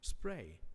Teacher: a complex onset of three consonants and a complex nucleus of one diphthong and no coda